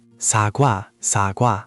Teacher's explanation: Your lips start rounded for o, then open for a.